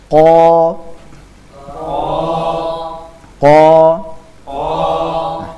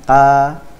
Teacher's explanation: Q juga memiliki sifat Istia tebal jadi perhatikan dia harus diberikan sifat tebal